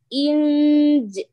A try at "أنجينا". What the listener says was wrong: Say No, prolong it more. Inj. You see, you're not being able to prolong it a lot because you're touching.